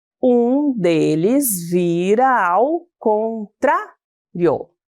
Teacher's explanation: Observem que paramos na sílaba tra, que é a mais forte, e excluímos a sílaba rio. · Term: sílaba tônica